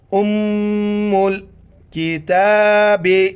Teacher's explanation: شد ہے یہاں پر ناک میں آواز پیدا کرنی ہے